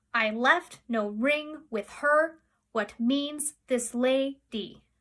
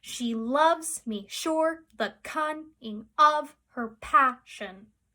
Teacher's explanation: the last syllable is an added syllable, so it makes it 11, and it falls in the unstressed position. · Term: feminine endings